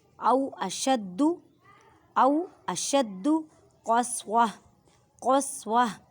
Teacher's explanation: او اشد قسوہ اب دیکھیں یہ گول تا ہے، جب گول تا آ جائے وقف آ جائے تو اس کی آواز کو ہاں میں بدل دیتے ہیں اور ہاں کو ساکن کر دیتے ہیں